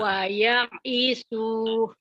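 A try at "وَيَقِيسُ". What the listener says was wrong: Ya-nya pendek. Ya-nya pendek. iso ini waya isu. Waya isu Bu. Waya isu.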